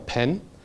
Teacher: it's the puff of air that you release after the plosive. And that results in a delay between the moment where you say the P and the moment where you say the A. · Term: aspiration